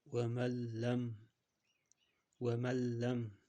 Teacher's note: ya'ni g'unna bo'lmayapti. Faqat lamni tashdid bilan ikkita qilib o'qiyapmiz.